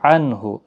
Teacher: عنہ نون ساکن کے بعد ہا ہے، اظہار حلقی ہوگا